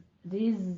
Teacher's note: رز میں زائ کی آواز پر آئے گی ہمارے پاس سیٹی کے ساتھ